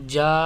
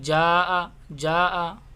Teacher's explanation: مد متصل ہے، اس کو کھینچنا ہے 4 الف کے برابر